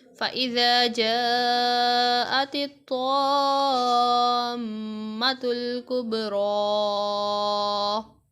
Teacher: تا کو باریک پڑھا جائے گا اور طا کو پر